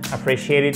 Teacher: on n'a que des T qui se prononcent presque comme un D